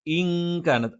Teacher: ഇൻ കാനത്ത് എന്നല്ല, ഇൻ കാനത്ത്. അപ്പൊ നൂനിനെ അവ്യക്തമാക്കുന്നു, അതോടൊപ്പം മണിച്ചുച്ചരിക്കുന്നു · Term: ഇഖ്ഫ